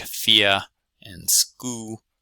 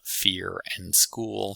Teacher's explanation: vocalization or deletion of R's and L's, so getting things like fia and skoo in place of fear and school from the mainstream.